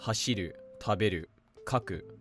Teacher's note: the second is with the drop after the second to last mora